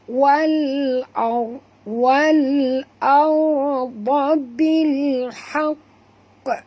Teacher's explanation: ra tebal kerana ra itu mati, huruf sebelumnya baris atas